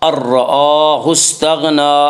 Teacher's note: الرآہ استغنی، حمزہ کے اوپر کھڑا زبر ہے، کھڑا زبر کو ایک الف کے برابر کھینچ کر پڑھیں گے اور را کو پر پڑھیں گے۔